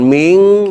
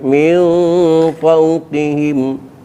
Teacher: nun mati ketemu Fa ikhfa ausat suaranya Suara m